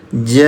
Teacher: Bunyi jimnya yang ada tanda alis dipanjangkan selama 5 ketukan. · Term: mad wajib mutasil